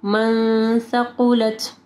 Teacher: نون ساکن کے بعد دیکھیں اگر سا آئے گا تو پھر ہم لوگ یہاں پہ اخفا غنہ کریں گے